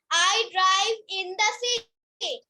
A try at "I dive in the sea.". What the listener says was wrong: Drive না বাবা, dive আর নাই কিন্তু DIVE dive। আবার বলো।